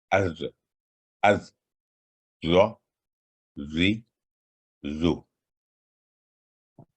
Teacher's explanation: یہ بھی تھک ساؤنڈ ہے، موٹی آواز والا حرف ہے، تخفیم، اور یہ بھی اصطلاح والی صفات اس میں پائی جاتی. زبان کے دائیں اور بائیں کناروں کو اوپر والی داڑوں کے ساتھ لگانے سے ادا ہوتا ہے، اور یہ حرف ہمیشہ بھاری آواز میں ادا ہوتا ہے. تو اس کے لیے پریکٹس کی ضرورت ہوگی، یعنی زبان کو گھما کے رائٹ یا لیفٹ سائڈ پہ آپ نے لگانا ہے.